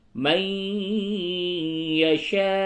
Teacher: نون ساکن کے بعد یا ہے، یہاں پہ ادغام مع الغنہ ہوگا